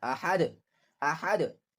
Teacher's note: So Dal has a qalqalah. We will bounce the Dal.